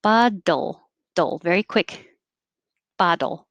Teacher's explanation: I'm making a D, and I release it, and I go back for the L, which is made in the exact same position.